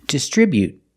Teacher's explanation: together making the sound B not boo but bu distribute distribute with the T at the end after the vowel you can make a stop T sound distribute you don't have to release the T you